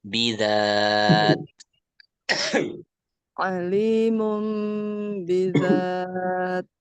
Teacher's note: jadi huruf ta-nya itu ada angin yang keluar ya.